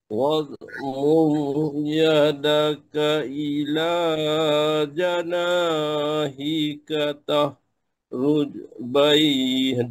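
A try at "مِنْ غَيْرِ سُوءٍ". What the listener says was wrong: jangan panjang ya min ghairi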